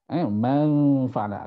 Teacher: Sebutan man apabila bertemu dengan fa dia akan berubah. Man fa'ala akan dengung. Di situ berlaku perubahan, itu mustahakun.